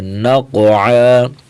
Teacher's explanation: عین قاف کو موٹا کریں گے، عین کی آواز نکالیں گے